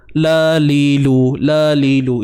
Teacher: Dengan sifat istifal, lidah merendah. Maknanya bunyinya tak tebal lah.